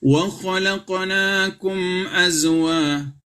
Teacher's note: Zai bukan huruf Qalqalah ya maka tidak boleh dipantulkan